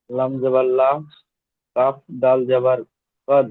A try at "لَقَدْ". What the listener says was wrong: কাফ নয়, ওটা কফ। কফ।